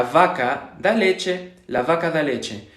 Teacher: este sonido en español estándar, entre comillas, se supone que debe de pronunciarse exactamente igual que la B, ¿no? Vaca, vaca.